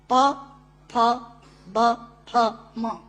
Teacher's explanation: दोनों होंठ मिलाकर बोले जा सकते हैं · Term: ओष्ठांग